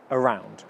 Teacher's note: the first sound of around is again the schwa sound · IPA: /əˈraʊnd/